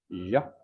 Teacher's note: Les consonnes prépalatales sonores constrictifs